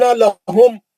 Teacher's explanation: ان لہم، بس اس سے زیادہ نہیں. ان لہم پکڑ لینا، میم کو کھینچنا نہیں